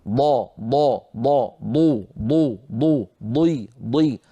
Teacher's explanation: الضاد من حافة اللسان، هذا اللسان الحافة اليمنى أو اليسرى، كنا قد شرحنا ذلك عن طريق اللوحات وبينا بأن من هاتين الحافتين تخرج الضاد.